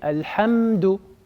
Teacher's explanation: Il n'y a pas de qalqala, on retient bien le mime.